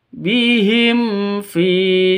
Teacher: hukum mim mati bertemu dengan fa bacanya jelas terang karena izhar syafawi bukan ikhfa syafawi tapi izhar safa syafawi jelas bacanya tidak boleh disentak tidak boleh dipanjangkan bihim fi salah bihim fi juga salah yang betul bihim fi seperti itu.